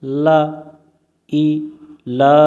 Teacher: লাম এর উপর খাড়া জবর এক আলিফ টানতে হয়